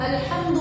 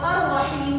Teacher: ہم الحمد میں ظاہر کر کے پڑھ رہے ہیں، اور الرحیم میں لام کی آواز کو ہم ظاہر نہیں کر رہے